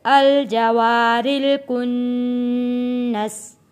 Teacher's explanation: را کے نیچے زیر ہے، یہاں پہ را ہم پتلا پڑھیں گے یعنی باریک پڑھیں گے